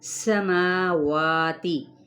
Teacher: پہ یا مدہ، عین کی پیش کو سین کے ساتھ ملائے، سین پہ سیٹی کو واضح کریں